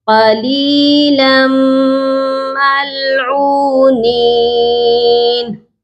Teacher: لام میم 2 زبر لم، لام کو جب ہم نے میم کے ساتھ ملایا ہے تو یہاں پر غنہ بھی ہو گیا۔ اب آپ دیکھیے کہ میم کے اوپر تشدید ہے۔